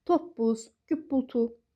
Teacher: Qoşa p-dı isə p-b kimi tələffüz olunur.